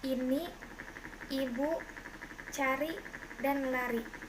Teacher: kriterianya vokal depan tinggi atas tak bundar tertutup